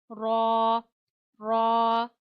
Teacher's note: मसूड़ों से पीछे जो ताल्लु है आपने वहां जबान लगानी है, जबान के किनारे को लगाना है और रॉ पढ़ना है मोटा करके